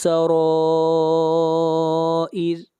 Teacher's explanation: یوم تبلس، توب، با کے اوپر قلقلہ، لام کو ملائیں گے سین کے ساتھ، تبلس سرائر، را کو موٹا پڑھیں گے اور را کے اوپر مد متصل ہے